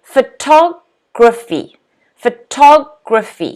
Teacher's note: Notice the stress is on the second syllable.